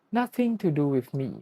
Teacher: When he hits the word to, the vowel effortlessly reduces down into a tiny sound, the schwa.